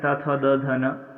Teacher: अगला है दंत, यानी जो दांतों से उच्चारित किए जाते त थ द ध न, इन्हें बोलते समय हमारे जिह्वा जो है, जीभ जो है वो दांतों को स्पर्श करती है